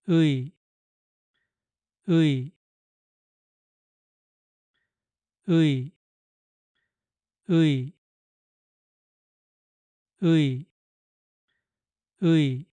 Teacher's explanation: just connect the two sounds uh followed by E. You start with uh and then move into e